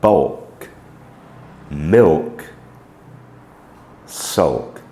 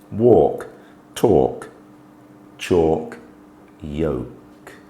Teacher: there's a definite full sound both the L and K are sounded